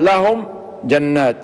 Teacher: الميم الساكنة بعدها الجيم، وهذا من باب الإظهار الشفوي، لأن الميم الساكنة لذا لم يكن بعدها حرف مثلها ميم مثلها أو باء فيبقى مظهرة ونقال عنها إظهار شفوي.